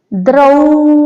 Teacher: ಮೂಲಾಕ್ಷರದ sound ಕಡಿಮೆ ಮಾಡ್ಕೊಂಡು ಒತ್ತಕ್ಷರದ sound ಜಾಸ್ತಿ ಮಾಡ್ಕೊಂಡ್ರೆ ದ್ರೌಪದಿ ಆಗುತ್ತೆ